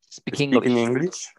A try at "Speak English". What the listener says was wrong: Not exactly. Speak English. You're adding an in there. And it's just speak English. Speak English. You're saying speaking English. And it's speak English.